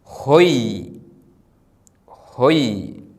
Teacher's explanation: ഓ എന്ന സ്വരത്തിന് ശേഷം യൂത് വന്നാൽ ഒയ്. The letter yud that comes after the vowel o is pronounced as oi. ഉദാഹരണം, ഹേ vowel o yud, ഹൊയ്, ഹൊയ്.